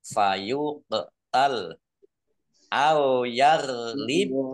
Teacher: Lam berdiri mat tabi'i fayuqtal qaf sukun bacaan kolkolah dibaca memantul ditampakkan pantulannya fayuqtal au yarlib goin ya goin sukun ini bukan kolkolah jangan dipantulkan ya. Au yarlib bak sukun bacaan kolkolah dibaca memantul atau dipantulkan.